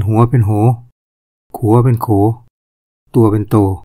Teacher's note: คำที่ออกเสียงสระอัวไทยลือก็จะออกเสียงเป็นสระโอ